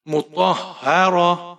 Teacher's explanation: और यहाँ पर आप जब वकफ करेंगे तो हा की आवाज आनी चाहिए। ता को हा में तब्दील कर देंगे, ये गोल ता जो है।